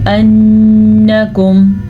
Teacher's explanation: نون کا غنہ ادا کریں، نون پہ شد ہے